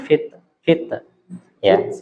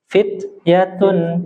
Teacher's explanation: ada satu huruf Ta jangan diqalqala